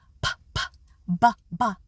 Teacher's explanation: So for example, when we make the P and the B sound, p, p, b, b, we make those sounds at the lips, called bilabial sounds.